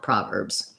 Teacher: we have first syllable stress and letter O says ah. So often in stressed syllables, the spelled letter O is going to say the vowel sound ah.